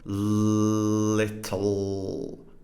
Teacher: this l is velarized, which means the back of the tongue here goes up towards the velum